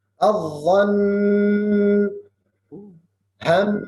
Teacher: Gunna 2 harakat dan tasydid. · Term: gunna dan tasydid